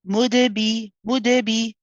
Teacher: after the qalqala, we very fluently and smoothly move on to the B.